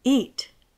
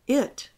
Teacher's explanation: The i-sound in IT doesn't exist in Spanish, and there is no way to write it with letters that represent sounds in Spanish. The e-sound in EAT is the sound of the letter i in Spanish. It is a long i. It is pronounced by stretching the lips back, as if to smile. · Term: long e